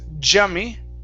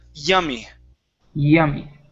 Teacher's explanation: Give me an E sound at the beginning. Instead of a Spanish Y, it's yummy.